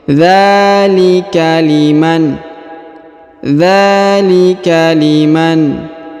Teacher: Huruf dza dipanjangkan 2 harokat karena terdapat alif kecil.